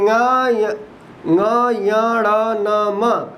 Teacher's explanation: इनके बोलने में नाक की भी आवश्यकता होती है और मुंह की भी आवश्यकता होती है, इसीलिए यह वर्ण क्या है, अनुनासिक है।